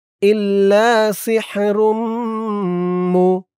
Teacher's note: ঈদগামে বাগুন্না গুন্না হবে কারণ তানবিনের পরে ঈদগামে বাগুন্নার চার হরফের এক হরফ মিম আসছে র মিম দুই পেশ রুম মিম পেশ মু ইল্লা সিহরুম মু